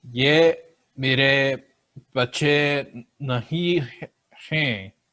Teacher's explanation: A lot of nasalization there.